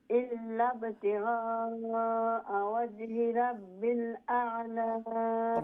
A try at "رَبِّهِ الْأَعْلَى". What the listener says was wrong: রব্বিল না রব্বিহিল নাইলে হা উচ্চারণ বাদ যাইব কি রব্বিহিল